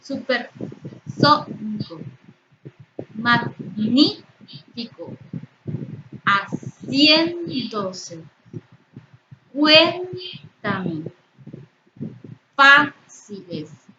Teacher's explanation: Todas estas palabras tienen una emisión de voz más intensa en su antepenúltima sílaba, por eso son palabras esdrújulas.